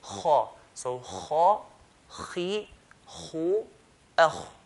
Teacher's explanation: they used to pronounce it with heaviness, putting pressure on the roof of the mouth and saying kha. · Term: heavy letters